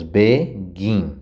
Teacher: Nós temos begin, o gin é mais forte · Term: sílaba tônica